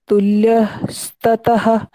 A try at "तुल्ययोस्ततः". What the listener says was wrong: हाँ वैसे ठीक है, बस देखो ये ना तुल्य ना होके तुल्ययो तुल्ययो, क्योंकि दो य है यहाँ, तुल्य बोलते हैं तो केवल एक य का प्रोनाउंसिएशन आएगा, लेकिन यहाँ दो हैं तो तुल्ययोस्ततः